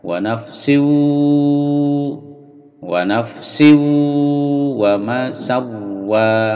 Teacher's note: tidak boleh mantul, wa nafsim tidak boleh, wa nafsi, wa nafsi, lalu sin bertemu wawu dimasukkan ke wawu dengung ditahan